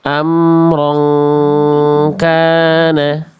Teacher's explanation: Fathatain ketemu kaf ditahan dulu dua harakat. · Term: ikhfa hakiki